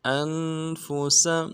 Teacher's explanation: حمزہ کو نون ساکن کے ساتھ ملانا ہے، نون ساکن میں غنہ کریں گے ، فا کو نرم سے ادا کریں گے، سین کو بھی